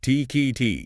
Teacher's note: You stop the air with your tongue just behind your teeth, and then you release a small puff of air without any vocal cord vibration. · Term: unvoiced stop